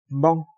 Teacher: 두 입술 사이에서 소리가 나는데 콧소리를 내면서 터뜨리면서 소리를 낸다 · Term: 양순파열비음